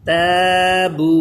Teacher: یہ الف باریک ہوگا کیونکہ تا باریک پڑھا جاتا ہے